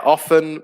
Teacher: often where the t is silent